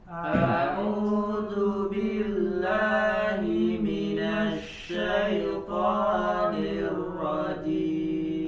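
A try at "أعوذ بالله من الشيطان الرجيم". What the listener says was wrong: Nah, ya, perhatikan huruf A, hamzah dan H ya. Hamzah dan H disempurnakan dari pangkal tenggorokan. A'u, jadi jangan a'udzu billah, enggak jelas a-nya ya, tidak pas makhrajnya. Maka sempurnakan a ya dari pangkal tenggorokan.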